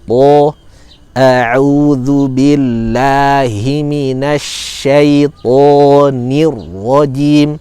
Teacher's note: Syaito, to punya karakter kuat, syiddah, kemudian juga punya karakter idbaq, tebal, isti'la ya. Maka tidak boleh tipis. Ta, syaita, dia tebal.